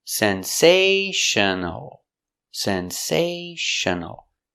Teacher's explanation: Sensational four syllables the stress is on the second syllable